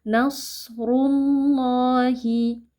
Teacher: huruf shad adalah huruf tebal, jadi kita harus membacanya dengan mengangkat pangkal lidah, lalu dia memiliki sifat hamas dan rokhawah, yang artinya kita harus mengalirkan nafas dan juga suara ketika kita membaca huruf ini.